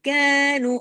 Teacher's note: میم باریک حرف ہے اس لیے، الف جو ہے نا باریک کے ساتھ جب آتا ہے تو باریک پڑھا جاتا ہے، جب ہیوی کے ساتھ آتا ہے ہیوی پڑھا جاتا ہے، وما کینو، کینو، اب یہ کاف ہیوی نہیں ہے، اس کو قو نہیں کر دینا، اوپر زبان اٹھا کے قو ایسے نہیں کر دینا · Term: کاف ہے باریک